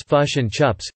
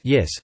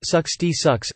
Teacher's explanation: raised or centralized versions of the short I and E vowels, which in New Zealand are close to and respectively rather than in New Zealand. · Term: clipped vowels